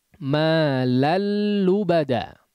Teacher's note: malal langsung masuk kepada huruf lam. Jangan digunnahkan ya. Baik gunnah yang sedikit ataupun yang banyak ya.